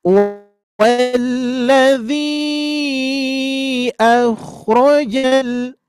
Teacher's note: pengucapan yang kho di sini ditebalkan dan ada sedikit getaran gitu ya. Nah cuman tidak berlebihan.